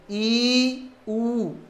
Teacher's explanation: इनको बोलते समय जीभ की मांसपेशी अत्यधिक खिंचाव में आ जाती है, इसलिए इनको दृढ़ स्वर कहते हैं।